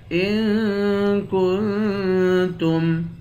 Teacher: ان پہ بھی اخفا کریں گے، کاف کو نون سے ملا کر نون پہ بھی اخفا کریں گے